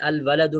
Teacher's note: الف لام واو پر داخل ہوا ہے تو وہاں ادغام نہیں کیا، لام پڑھا جا رہا ہے واضح کر کے